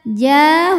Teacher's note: Maka huruf jim panjang 2 harokat. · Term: mad tabi'i zahiri